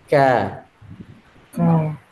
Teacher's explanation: tengah lidah bersentuhan pada lelangit tengah. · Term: huruf kaf